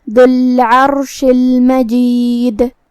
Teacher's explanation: را کا حکم ہے تفخیم کیونکہ اس پہ ہے جزم لیکن اس سے پہلے والے حرف پہ مطلب عین پہ زبر ہے، تو ہم را کو بھاری آواز میں پڑھیں گے، آخر میں شین کے نیچے زیر ہے تو ہمیں شین کو زیر سے ادا کرنا ہے۔